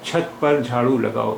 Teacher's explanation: In छत, cha is aspirated sound, and in झाड़ू, jha is aspirated sound.